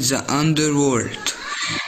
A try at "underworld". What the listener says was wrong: Not underworld. No, underworld. Underworld. World. Your L should be pronounced. Underworld.